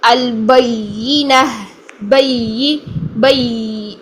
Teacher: یا ساکن میں آواز چلتی ہے، ٹھیک ہے؟ سانس تو نہیں ہوتی لیکن آواز چلتی ہے، اس میں آواز کو جاری رکھتے ہیں، اور یہ بہت زیادہ نرم لیٹر ہے، اس کو نرمی سے ادا کرتے ہیں، اس کو بالکل بھی سختی نہیں اس میں لے کر آتے، سختی لے کر آئیں گے رگڑ خاتی ساؤنڈ پیدا ہو جائے گی اور ہمارا مخرج غلط ہو جائے گا۔